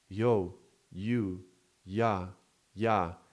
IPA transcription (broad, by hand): j